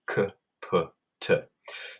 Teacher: So really you just kind of breathe when you say the letters K, P, and T.